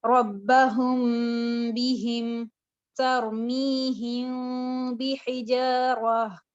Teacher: मीम साकिन के फौरन बाद आप हर्फ बा देखते हैं तो आप यहाँ पर एक खफीफ सा गुन्ना करते हैं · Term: इख्फा शफ़ी